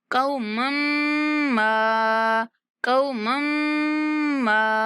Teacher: मीम मुशद्दद आ गया, गुन्ना करेंगे। कौमम मा, कौमम मा, मीम को थोड़ा देर खींचना भी है ना, 3 सेकंड तक खींचेंगे।